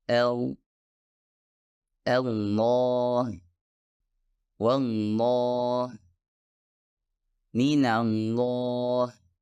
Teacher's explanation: epiglotis mendorong ke belakang yang juga membantu membuat suara lebih penuh dan lebih berat